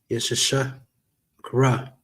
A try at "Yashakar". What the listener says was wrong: Yash Shakar. Yash is joined together on that.